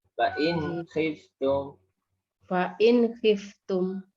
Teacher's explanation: Jadi langsung Bu, tidak ada unsur dengung, tidak ada unsur mantul. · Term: idhar